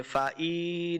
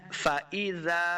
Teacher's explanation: حمزہ زیر ای، اس کو لمبا نہیں کریں گے، فائی نہیں کریں گے، پڑھنا ہے فاذا.